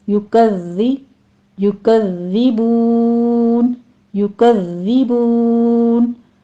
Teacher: ज़ाल की आवाज़ में आपने सीटी नहीं गानी